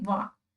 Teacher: जब हम वाह बोल रहे हैं तो हमारा जो नीचे का लिप्स है और दांत है दोनों टच हो रहे हैं, तो इसलिए हम इसको दंतोष्ठ कहेंगे।